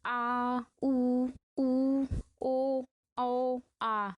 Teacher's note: जीभ के पश्च यानी कि पीछे वाले भाग से उच्चारित स्वर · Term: पश्च स्वर